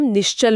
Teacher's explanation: तो, इसीलिए, जब नी के बाद चल आता है, तो जीभ तालु पर होने के कारण विसर्ग अपने आप श बन जाता है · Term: आधा श